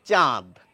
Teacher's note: স্বরধ্বনিকে অনুনাসিক করছে আমরা কিন্তু পরিষ্কার এই বানানটি দেখলেই বুঝতে পারছি এখানে চ এর সঙ্গে যে আ রয়েছে আকার রয়েছে অর্থাৎ আ ধ্বনি রয়েছে সেই ধ্বনিকেই কিন্তু এই চন্দ্রবিন্দু অনুনাসিক করে